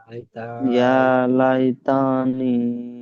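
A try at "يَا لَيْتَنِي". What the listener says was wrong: তা টান হবে না, তার উপর যাবার, ইয়া লাই তানি।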